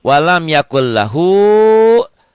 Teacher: Kenapa jadi yakul L? Karena N-nya ketemu L. Idgham bila guna, dileburkan idgham itu.